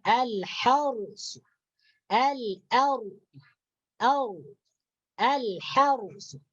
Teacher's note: Nah, itu ra sukun dibaca tafkhim.